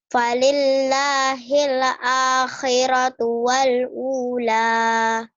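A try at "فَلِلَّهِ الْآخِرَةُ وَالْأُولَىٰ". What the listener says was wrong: Salahnya di mana kamu? Tahu nggak? Nah, kamu berasa ya. Ayo hilangin le-nya. Falil falillahil akhiratu wal ula. Falillahil. Jangan hile ya. Kamu harus hilangin itu. Falillahil akhiratu wal ula.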